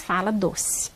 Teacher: a maioria dos brasileiros acaba mesmo falando E como se fosse I